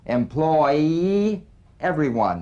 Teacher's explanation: The Y link. Linking words that end in the Y buzz.